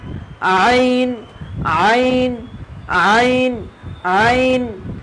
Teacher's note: দুই নম্বর মাখরাজ, হলকের মধ্য, হলকের মধ্য বা কত মধ্যকান হইতে, হলকের মধ্যকান হইতে আইন